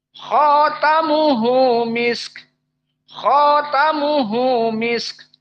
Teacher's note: Jadi kho-nya dimadkan. dan taknya fathah.